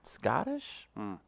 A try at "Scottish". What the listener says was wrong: It's Scottish, if you're going to say it right. There's no T's.